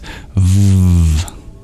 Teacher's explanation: In English, when we form the V, we press our bottom lip against our teeth